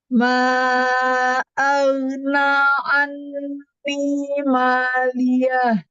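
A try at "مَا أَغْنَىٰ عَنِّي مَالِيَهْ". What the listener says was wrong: Iya, ghainnya ya. Ma aghna anni maliyah. Kalau untuk bacaannya konsentrasi perbaikan pada huruf bod ya, terutama yang kasrah ya, dhi tadi ya, dan juga ghain yang sukun tadi. Ma'aghna di situ ya, ya.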